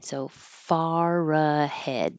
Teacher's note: hold that final D because you're just going to hold the tongue in the D position without releasing it